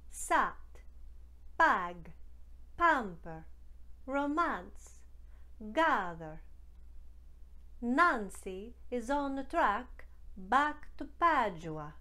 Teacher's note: the short ah sound found in american speech on words like can ham and pancetta becomes ah as in spa in the italian dialect to make this change from ah you're just going to bring